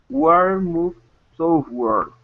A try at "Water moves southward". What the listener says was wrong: Okay, instead of south, open up your mouth. Sow. South. Southward.